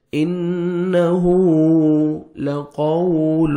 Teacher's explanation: انہو لقول، واو لین ہے، واو ساکن سے پہلے زبر ہے، قاف کو موٹا کر کے پڑھنا ہے اور نرمی سے واو کو ادا کریں گے